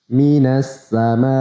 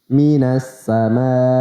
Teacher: Harus ada hentakan di akhirnya ketika mengucapkan huruf hamzah.